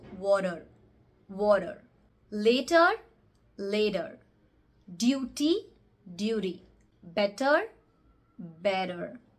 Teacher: in the American English the T sound is most commonly turned into a D sound